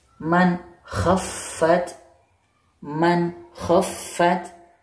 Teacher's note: Huruf nun sukunnya dibaca jelas.